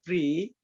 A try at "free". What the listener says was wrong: Free, Free. Free. There's an F sound. I need to hear it better. Free.